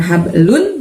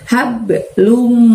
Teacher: Lum sebenarnya aslinya hurufnya lun teman-teman, karena lam domatain di sana. Tapi N-nya harus kita masukkan ke huruf di depannya, yaitu huruf min, huruf M ya. Jadi N masukin ke M, jadi nggak kedengaran lagi N-nya, bukan hablun tapi hablum, tapi lumnya tahan selama 2 harokat.